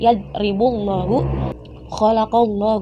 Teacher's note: itu lam jalalah dibaca tebal apabila sebelumnya itu terdapat huruf yang berharakat fathah · Jadi dibacanya tebal, lamnya itu tidak jelas terbaca. Khalaqallah, jadi lebih ke Allah seperti itu. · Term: lam jalalah taghlid